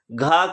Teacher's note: घ का उच्चारण स्थान कौन सा है तो कंठ